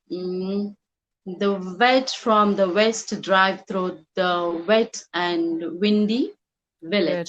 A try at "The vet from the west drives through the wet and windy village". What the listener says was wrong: remember to pronounce the s on drives